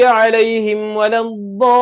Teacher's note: Jadi bila kita baca waladdallin 6 harakat.